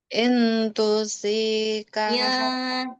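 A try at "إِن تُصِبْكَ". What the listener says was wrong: Ya, jangan nempel, samar. Jadi kadang terbaca jelas.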